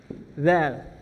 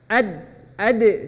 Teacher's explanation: Kalau dal ujung lidah bertemu dengan pangkal gigi seri atas, ini gigi seri akarnya, pangkalnya.